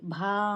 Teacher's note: బా అనేది మహాప్రాణ అక్షరము, ఒత్తు ఉంది, ఇంకా దీర్ఘం కూడా ఉంది, అందుకని నొక్కి సాగదీయాలి